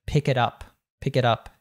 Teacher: You have an American T there. And all three of those words really linked together.